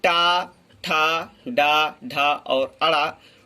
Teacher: इन वर्णों को मूर्धन्य कहते हैं और इनका उच्चारण स्थान मूर्धा है।